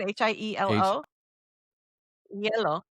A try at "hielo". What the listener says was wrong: Yeah, but the H is silent. in our vernacular.